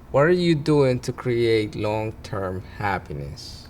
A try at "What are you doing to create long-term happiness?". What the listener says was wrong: More pitch.